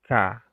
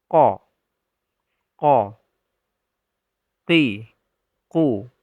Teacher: Jika kita mendekatkan tangan ke bibir, maka tidak ada napas yang keluar. Atau hanya sedikit sekali . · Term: huruf jahr